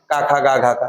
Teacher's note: का वर्ग के जितने भी अक्षर है वो कंठ से बोले जाते हैं